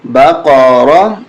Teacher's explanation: قاف کو موٹا کریں اور را کو بھی موٹا کر کے پڑھیں گے،